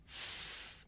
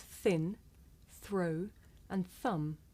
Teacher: I make the sound by sticking my tongue out just a little bit th, and blowing air between my tongue and my top teeth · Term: voiceless consonant